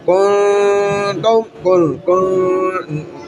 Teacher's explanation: नाक में आवाज़ आ रही है, नून छुप रहा है, इख्फा हो रहा है